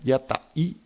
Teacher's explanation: con la pausa glotal entre las dos vocales últimas